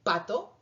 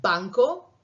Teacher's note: el aire obstruye con el labio de arriba y el labio de abajo